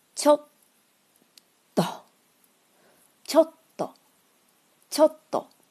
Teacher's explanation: ちょ后面的小的つ是促音，发音的时候要强烈，也就是把前面的ちょ发完了之后憋一股气，再发后面的と。 · 所以这个促音呢，还是占了一拍。